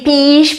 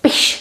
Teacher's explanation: It would not be píš, but piš, short I. So we shorten the I.